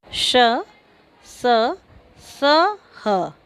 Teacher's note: इन व्यंजनों के उच्चारण में हवा मुंह के किसी स्थान से रगड़ खाकर बाहर निकलती है। इनके उच्चारण में ऊष्मा सी उत्पन्न होती है। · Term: ऊष्म व्यंजन